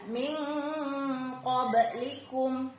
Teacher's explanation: kalau nun sukun bertemu qaf itu ikhfa'nya kuat ya